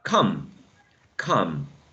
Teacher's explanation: For example, in this one, you say come, come, short, mid-central sound, come. And with this one, you say calm, calm. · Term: wedge